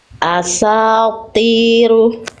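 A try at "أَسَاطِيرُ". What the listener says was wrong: Belum, angkat lagi sedikit. Asatiru. Ti. Oke, nanti ini belum maksimal ya karena tadi bunyinya beda sama yang awal. Coba Bunda baca lagi to kasrohnya aja. Ti. Ti.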